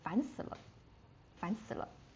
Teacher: You can see the dot dot dot on the luh because that is a neutral tone, so it's just without the tones. It's It's just a very natural like in the middle range